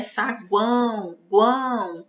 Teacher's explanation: A letra A ela aparece com mais força. E a letra U e a letra O aparecem com menos força. Então, a gente chama de semivogal.